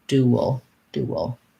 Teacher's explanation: Duel sounds like an oo, tense oo, a little bit of a glide w, and then my dark syllabic l. Duel sounds like a schwa and an l, or a little bit similar to the word wool, like wool from a sheep.